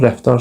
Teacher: Yəni yazılışında yox, tələffüzündə D var. Rəftar sözündə də artıq td əvəzlənməsi baş verdi. Yəni D var.